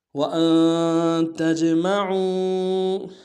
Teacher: تا کو جیم کے سامنے لانا ہے، جیم حرف قلقلہ میں سے قلقلہ کریں گے